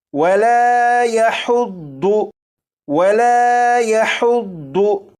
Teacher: یہ ضاد ہے، اسے پور یعنی موٹا پڑھیں گے، لیکن اسے سیٹی کی آواز کے ساتھ نہیں پڑھیں گے